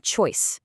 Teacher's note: Or look at the oi in choice. Your tongue physically glides from the back of your mouth to the front. You can actually feel the travel happening inside your mouth during that single beat. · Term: dip thongs, diphthongs